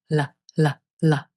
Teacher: The light L is quick and forward in the mouth. The tip of the tongue presses and releases at the ridge right behind the top front teeth. The sides of your tongue stay relaxed and the lips stay neutral.